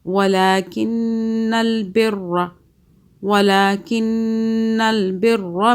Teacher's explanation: نون مشدد پہ ہم گنہ کریں گے 2 سیکنڈ کا